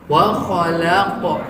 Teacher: Qalqalah apa? Sugra, kecil. Tapi harus dipantulkan. Pantulkannya dengan sifat isti'la.